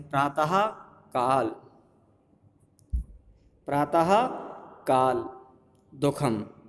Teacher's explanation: ठीक है, और विसर्ग का भेद जिह्वा मूली, जब विसर्ग के बाद का खा वर्ण रहते हैं तब अर्ध विसर्ग का उच्चारण होता है